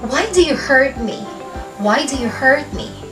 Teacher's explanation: That's falling intonation dahil ang sagot sa tanong na yan ay direct answer. Bibigay siya ng dahilan bakit niya sinaktan.